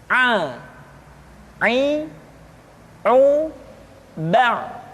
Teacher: pengucapan huruf A dikeluarkan dari tengah-tengah tenggorokan seperti kita mengucapkan huruf H. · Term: huruf Ain